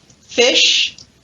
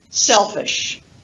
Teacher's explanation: the full vowel, as in fish, and the unstressed version of it in the unstressed syllable in the word selfish